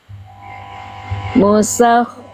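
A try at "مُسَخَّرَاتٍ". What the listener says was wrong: Alirkan lagi sedikit. Saya kurang dengar aliran nafasnya dan suaranya.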